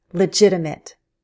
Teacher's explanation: In American English, we use a flap T between the two i's